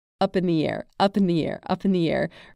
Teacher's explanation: none of those words are emphasized